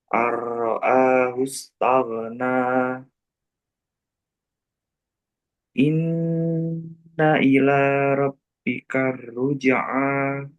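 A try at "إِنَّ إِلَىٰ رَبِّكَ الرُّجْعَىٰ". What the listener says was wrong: Roknya tebalkan. Robbi karu ja'a.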